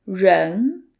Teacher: a retroflex sound which requires you to curve the tip of your tongue backwards